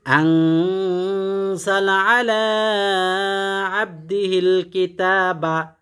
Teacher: আনজালা টান নাই, আলা 1 আলিফ টান, কিতাবা 1 আলিফ টান।